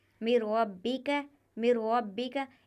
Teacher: یہاں پر را آیا ہوا ہے نون ساکن کے بعد تو یہاں پر بھی بنا گننے کے ہم اس کو ادا کریں گے، ادغام ہوگا لیکن بغیر گننے کے۔